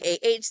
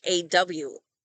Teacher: I'm from California my accent ah and aw sound exactly the same